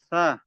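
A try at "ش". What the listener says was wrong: sha. Lebih tebal lagi. Sha. Nah, huruf shin itu udara itu mengalir dari sisi depan gigi dan samping gigi. Sha, sha, sha, sha. sha.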